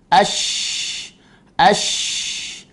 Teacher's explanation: Memiliki sifat yang pertama al-hams, berjalannya nafas. Yang kedua memiliki sifat ar-rakhawah, berjalannya suara. Kemudian ada nama sifat at-tafashi, intisyarul hawa.